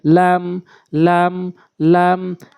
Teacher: আগে বাড়াইয়া উপরে তালার সঙ্গে কাফ লাম লাম লামটি সহজ রয়েছে লাম জিহ্বার আগা উপরের তালার সঙ্গে